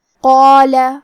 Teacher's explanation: ہمیں قاف کو اور اس کے بعد مد الف کو دونوں کو موٹی آواز میں پڑھنا ہے